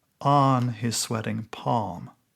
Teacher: the word on in the middle of the line, with its open vowel, resonates with the vowel of palm